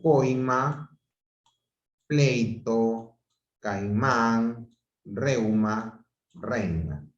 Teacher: la mayor fuerza de voz es primero y luego baja con la átona · El gráfico es decreciente porque en este caso empiezo con una vocal abierta y luego termino con una vocal cerrada. Por eso se le dice, en este caso, que estamos ante un diptongo decreciente.